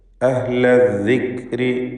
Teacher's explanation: റായിന് കസ്റ ആയതുകൊണ്ട് തർക്കീഖാണ്, നേർപ്പിച്ചുകൊണ്ട് റായിനെ ഉച്ചരിക്കണം.